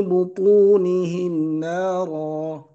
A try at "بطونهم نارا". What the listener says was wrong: إنما يأكلون في بطونهم نارا. لا تقول بطونهم نارا، هذا خطأ. حكم الميم هنا إظهار، لم نأتي عليه، لكن عليك يعني أن تنطقها صحيح. Where is إظهار in this ayah?